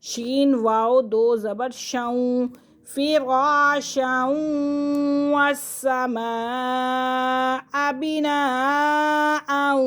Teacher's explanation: شین کو واو کے ساتھ ملائیں گے کیونکہ واو مشدد ہے